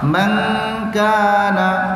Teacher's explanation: Bila kita baca ikhfa hakiki, man dia tak baca man, dia nun tak nyata.